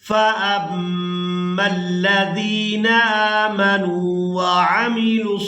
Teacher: सौद को पूरा अदा करेंगे और इसको खड़ी ज़बर की वजह से खींचकर अदा करेंगे